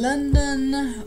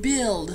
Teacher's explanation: then the liquid l as in London or in build so two slightly different ELLs one that is clear the other that is dark